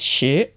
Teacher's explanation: Then 10 is shi, rising tone.